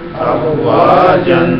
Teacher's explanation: اب زبر کی تنوین کو زبر الف میں بدلیں گے